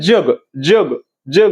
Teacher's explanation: वरती जीभ लागते त्याला तालव्य